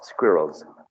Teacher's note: a progressive assimilation the plural form the plural coming after a voiced consonant sound like all should be Z